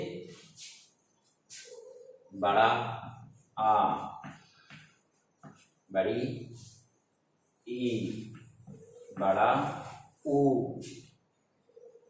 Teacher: 2 second लगेगा। दीर्घ स्वर के उच्चारण में हर्ष स्वर की अपेक्षा दोगुना समय लगता है और शक्ति भी दोगुनी खर्च होती है।